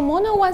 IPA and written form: mono wˈʌn (monoOne)